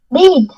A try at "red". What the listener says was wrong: Red. It's not read. Read يقرأ. Red color.